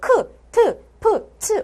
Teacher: 숨이 거세게 터져 나오는 소리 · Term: 거센 소리